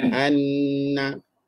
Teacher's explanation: Kalau sabdu Anna suara tu kena bawa ke hidung habis an terus bawa ke hidung Kalau babdulah kalau tak sebut